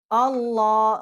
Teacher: اب لام جو ہے اللہ، ہم اس کو پر کر کے پڑھیں گے